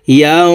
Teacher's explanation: এই নুন সাকিনকে নাকের ভিতরে লুকাইয়া গুন্নার সহিত পড়তে হবে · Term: ইকফাহ গুন্না